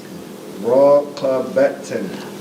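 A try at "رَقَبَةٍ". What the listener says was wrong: No prolongation. Raqabatin. For those online, ra, fatha, ra. Qaf, fatha, qa. With a click in the back of the throat. Ba, fatha, ba. Ta, kasratan, tin. Raqabatin.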